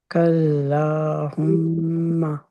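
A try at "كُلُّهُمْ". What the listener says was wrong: ہاں، ماں کو لمبا نہیں کرنا۔ اوکے،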